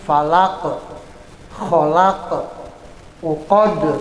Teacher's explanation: di penghujung kalimat falaq, kholaq, itu tidak boleh dibaca panjang. Tidak boleh falaq, nggak boleh ya. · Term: pendek